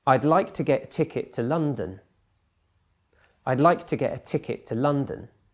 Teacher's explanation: I stressed like ticket and London so those are the the the content words of that sentence